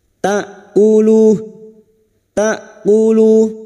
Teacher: Hamzah sukun yang memiliki sifat jahar dan syiddah, yaitu tertahannya nafas dan suara, maka bunyinya ta'kulu, ta'kulu, jangan tertukar ain, ya, jangan dibaca ta'kulu, ta'kulu.